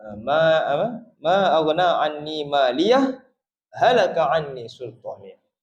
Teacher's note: Saktah ini yang mana berhenti sekadar dua harakat tanpa mengambil nafas yang baru.